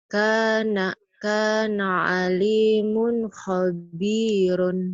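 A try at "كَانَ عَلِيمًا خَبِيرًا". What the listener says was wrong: bukan mun tapi man. Kana aliman khabiran.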